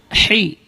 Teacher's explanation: Ha keluar dari tengah-tengah tenggorokan.